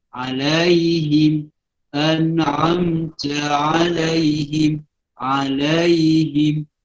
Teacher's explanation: Ain huruf halqum. Bukan dengan hamzah.